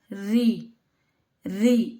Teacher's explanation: हमारी जो जीवा है वह मुख के दांतों से ऊपर वाले हिस्से को क्या करती है? स्पर्श करती है। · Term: मूर्धन्य स्थान